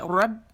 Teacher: دونوں ہونٹ کے گیلے سے آپس میں سختی سے ملیں گے. اب اس کو پیش دے دیں رب بو کا. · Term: با کا مخرج